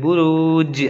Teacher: मीम ज़बर मा अतआमा, नून अलिफ ज़बर ना, अतआमना, नक, नून काफ ज़बर नक, आइन दो ज़बर अन, नक़अन, बा पेश बू, रा वाव पेश रू, बुरू, जीम साकिन बुरूज, बुरूज, बुरूज ऐसे नहीं बोलेंगे, बुरूज ऐसे बोलेंगे क्योंकि कलकला होगा, आवाज़ टक्कर खा के वापस आता है। ठीक है।